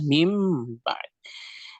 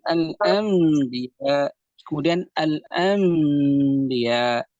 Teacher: قلبنا النون الساكنة أو التنوين إلى ميم، ثم أثبتنا الغنة بإخفائها، أثبتنا الغنة بمقدار حركتين بإخفائها.